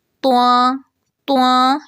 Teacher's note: یعنی پہلے تو ہونٹوں کو گول کرتے ہیں اور پھر لاسٹ میں آواز ناک میں لے جاتے ہیں